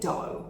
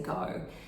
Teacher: they'd substitute D for G, so they'd say do, but they really meant to say go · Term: fronting